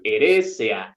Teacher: Tengo al final EA, y en español vamos a tender a diptongar, pero tienen que ser separadas.